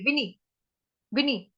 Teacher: बड़ी मात्रा नहीं करेंगे, जैसे ही वी खत्म होगा तो नी फटाफट बोलेंगे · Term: छोटी की मात्रा